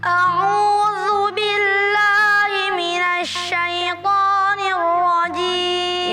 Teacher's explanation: huruf zal yang di ta'awudz tidak boleh ditebalkan ya. Jangan a'udzu, zu ya, tipis.